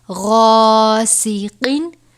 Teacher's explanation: الف سے پہلے غین ہے جو کہ حروف مستعلیہ میں سے ہے، اس لیے اسے پر پڑھا جائے گا